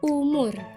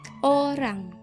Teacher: bunyi vokoid yang dihasilkan terdengar lebih bulat atau gelap karena lidah lebih jauh dari gigi dan suara diproduksi bagian belakang rongga mulut. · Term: vokoid belakang